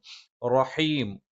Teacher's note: റ നാവിൻറെ തലയുടെ മുതുക് മേലെ മുൻപല്ലിന്റെ മോണയിലാണ്